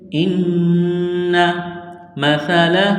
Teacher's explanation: ہے، حمزہ کو نون کے ساتھ ملائیں گے، پلس کریں گے، آواز یہاں پر ناک میں چھپائیں گے، غنہ کریں گے